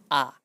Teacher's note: মানে দুইটা ঠোট সবচেয়ে বেশি যখন খোলা থাকে তখন সেটাকে বিবৃত স্বরধ্বনি বলে।